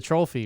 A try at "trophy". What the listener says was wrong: You're adding an L to the word trophy again. trophy.